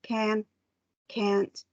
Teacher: i can't hear the t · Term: american influence pronunciation